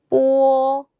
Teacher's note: 제가 일성으로 해서 약간 된 소리가 났어요. 뽀처럼 들렸죠, 여러분?